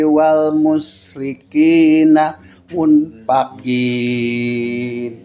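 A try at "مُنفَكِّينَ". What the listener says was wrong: had munfaqi, bacanya munfaqi karena di situ kafnya bertasydid munfaqi.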